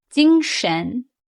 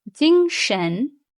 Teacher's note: First tone, 精, high, steady. And second tone, 神, is a rising tone.